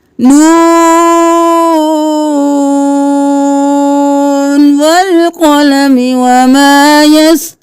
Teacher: اب نون نہیں کرنا، نون کرنا ہے، ناک میں آواز لے کے نہیں جانی، نون ایسے نہیں کرنا، نون 5 الف کے برابر نون کو کھینچنا ہے